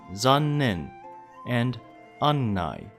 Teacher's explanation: Unlike other double consonants, the double n does not cause any sound shortening.